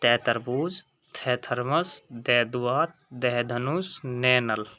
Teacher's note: और हमारे तय वर्ग का जो उच्चारण स्थान होगा, यानी कि यहाँ से हम इसे बोलते हैं उच्चारण स्थान होगा दंत्य, यानी कि दांत से बोले जाते हैं। जब हम इनका उच्चारण करते हैं तो जीभ दांत को स्पर्श करती है, तो इसलिए तय वर्ग का उच्चारण स्थान क्या होगा, दंत्य।